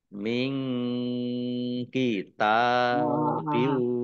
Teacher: Nun sukun bertemu dengan huruf kaf, bacaan ikhfa dibaca samar-samar